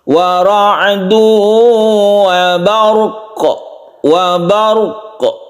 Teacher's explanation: Kemudian kalau kita berhenti, ini kita sukun ya, kita sukun qafnya, berarti dia itu qalqalah kubra. Wa ra'du wa barq, wa barq, ada qalqalahnya, ada pantulannya.